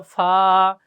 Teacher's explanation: নিচের ঠোঁটের পেট সামনের উপরের 2 দাঁতের আগার সঙ্গে লাগাইয়া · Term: 14 নাম্বার মাখরাজ